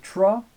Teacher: the tra and the dra, these are retroflex